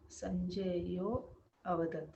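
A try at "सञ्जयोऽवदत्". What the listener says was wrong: Sanjayo vadat. For Purva Rupa Sandhi, we should not pronounce the akara.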